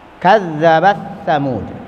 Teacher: Kemudian ta dengan sa, kadzabat ta, Kadzabat sa. Ta-nya masuk ke dalam sa. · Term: mutaqaribaini saghiran